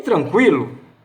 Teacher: A letra N é diacrítica, só avisa a letra A que ela será nasalizada. Não será uma vogal aberta.